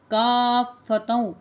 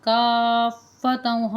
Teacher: کافۃ، اس میں حمزہ کی آواز نہیں آنی چاہیے، کاف الف فا مد زبر کاف آپ نے پڑھنا ہے، کاف کو کھینچ کے فا کے ساتھ ملا کے کا افا نہیں پڑھنا، کافتوں، حمزہ کی آواز اس میں بالکل بھی نہیں آنی چاہیے